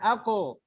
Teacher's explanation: Kalau Yang betul terlalu ko itu makhrajnya ko itu di lidah paling belakang. Lidah paling belakang kemudian dengan langit paling belakang. Ketika mengucapkan ko memang dia harus tebal.